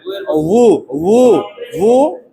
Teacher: মি মি হ্যাঁ উ বলা যাবে না ইউ বলা যাবে না দুই ঠোঁটের মাঝখান থেকে উচ্চারণ আসবে উটা উচ্চারণ হবে নরম করে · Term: ওয়াও পেশ উ